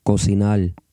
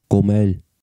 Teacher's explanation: When R, R, appears at the end of a syllable, it's often pronounced like an L, L. The verb meaning to cook, cocinar, is pronounced cocinar.